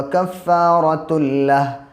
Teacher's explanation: تنوین کے بعد جب لام ہوتا ہے تو وہاں پہ ادغام کرتے ہیں، یعنی اس کی جو ناک میں آواز جانے کی تھی وہ ناک میں آواز نہیں جائے گی، اور یہ تا لام 2 پیش تل ہو جائے گا۔